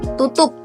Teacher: Jadi ada hambatan di kedua bibir. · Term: bilabial